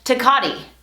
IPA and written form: tə ˈkɑ.di (Tecate)